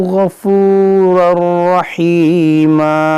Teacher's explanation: तनवीन के बाद राह, यहाँ पर इदगाम करेंगे बग़ैर गुन्ना के